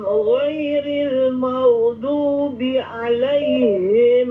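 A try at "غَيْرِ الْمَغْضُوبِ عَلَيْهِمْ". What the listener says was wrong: Huruf dad yang pertama masih kurang istitalah ya.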